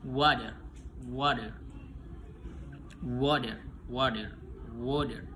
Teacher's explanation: Penjelasannya place of articulation laofelar. Bibir membulat dan bagian belakang lidah mendekati velum. Nah, manner of articulation approximate a voicing voice.